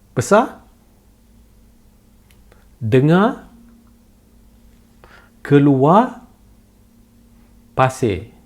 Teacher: the R sound is very soft, not rolled and not stressed.